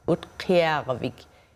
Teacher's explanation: the K is produced in the way back of the throat, what we call an uvular sound